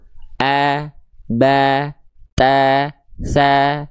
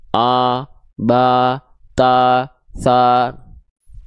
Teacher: Pangkal atau lidahnya rileks. Infitah, rongga mulutnya terbuka. Analogi yang kita sampaikan kepada teman-teman dengan cara buka mulut sedikit senyum. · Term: huruf tipis